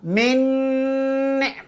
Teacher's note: Berbunyi dengung kerana beramal dengan sifat gunnah.